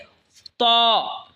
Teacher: ত জিহ্বার আগা সামনের ওপরের দুই দাঁতের আগার সঙ্গে লাগায় উচ্চারণ হবে ত